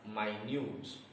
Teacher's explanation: When it is an adjective, the word is read as minute. And the stress is on new, minute, not on the first syllable.